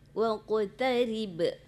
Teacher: Itu ri tipis, kemudian tidak ada mat situ. Langsung mati ba.